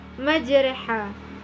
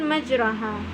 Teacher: Cara membacanya adalah majraha, bukan majraha, karena imalah artinya memiringkan bunyi fathah kepada kasrah